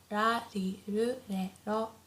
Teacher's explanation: the R sound is not as harsh as in English, so it's not like R, not like R, but it's very soft in between L and R.